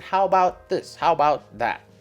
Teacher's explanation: And, your intonation will be rising.